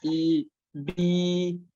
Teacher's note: Karena memang suara mat itu atau huruf mat itu tidak ada yang keluarnya dari hidung. Kan kalau kita tadi kita praktekkan i saja yang panjang i, bi, itu kan tidak ada suara dari hidung.